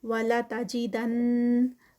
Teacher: دن پہ جو ہے وہ یہاں پر غنہ ہوگا کیونکہ نون مشدد ہے